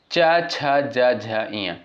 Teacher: और च वर्ग के अंतर्गत जो भी वर्ड आपके आते हैं इनका उच्चारण स्थान कहाँ से होता है? तालु से होता है